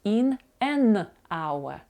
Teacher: onor ми бачимо що слово on починається з приголосної букви H буква існує на письмі але вона не вимовляється буква H і в нас получається що слово она починається з голосного звуку